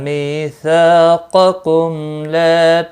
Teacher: قاف مستعلیہ ہے پر پڑھا جائے گا، میم ساکن کے بعد لام آیا ہے، اظہار شفوی ہوگا، گنہ نہیں کریں گے۔ · می یا مدہ ہے اور سا الف مدہ ہے، دونوں کو ایک ایک الف کے برابر کھینچ کر پڑھیں گے